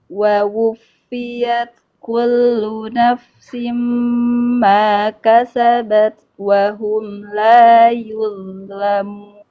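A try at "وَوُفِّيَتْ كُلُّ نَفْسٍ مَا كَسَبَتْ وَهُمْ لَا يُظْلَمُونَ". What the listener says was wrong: Baik, sekarang PR-nya adalah tinggal naikkan pangkal lidah itu. Coba nanti dipancing pakai huruf qaf, itu tuh dipancing gitu supaya lebih tebal lagi huruf-huruf tebalnya. Kalau untuk panjang pendeknya, dengungnya bagus semuanya. Alhamdulillah, makhrajnya juga bagus. Tinggal huruf tebalnya coba nanti dilatih kembali.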